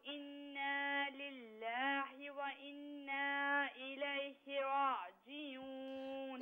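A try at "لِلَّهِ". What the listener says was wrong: انا للہ جو آپ نے پڑھا للہ میں جو آخر میں ہا ہے نا اس سے ہا نہ پڑھے, اسے یوں پڑھے للہ وَإِنَّا إِلَيْهِ رَاجِعُونَ.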